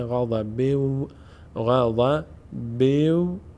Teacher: میشه غضب اما اگر ادامه داریم چون برس تنوین واو آمده ادغام صورت می‌گیره به جای نون دیگه واو باید تلفظ بشه